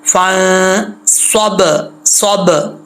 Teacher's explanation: फ़ंसब, स्वाद फुल मौत पढ़ा जाएगा, पुर पढ़ा जाएगा, ठीक है, हरूफ मुस्ताजा में से है, यहाँ नून पे गुन्ना होगा। बा जो है हरूफ कलकला में से है, साकिन है तो यहाँ पे कलकला करेंगे